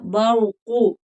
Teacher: ये काफ जो है नुक्ते वाला ये मोटा पढ़ा जाएगा।